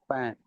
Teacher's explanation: for the F, it's between your lip and your teeth, right? Your teeth and your lip make contact for the fan